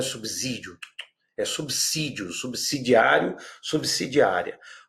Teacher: o S é sibilante, não é com o fonema Z